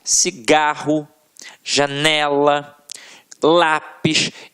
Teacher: paroxítonas, em que a sílaba tônica está na penúltima sílaba · a sílaba que a gente proferiu com mais força sempre esteve na penúltima sílaba